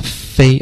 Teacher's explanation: 飞，然后摸一下喉咙，飞，喉咙没有震动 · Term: 轻辅音